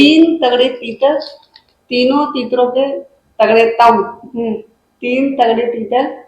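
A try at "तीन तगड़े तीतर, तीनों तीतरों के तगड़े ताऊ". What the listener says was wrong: इतना गैप क्यों ले रहे हो? इतना गैप नहीं ले रहे हो, कैंसिल हो गया दूसरा। फिर से बोलो।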